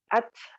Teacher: Lalu kemudian contoh kesalahan yang ketiga, saat ketika ta sukun, nah ini mungkin yang paling banyak dilakukan oleh para pembaca Al-Quran, ta ketika sukun itu mendesis. Apalagi sampai kemudian kalau dulu ya, waktu kita kecil itu ta ketika sukun itu seolah-olah seperti huruf C, ac.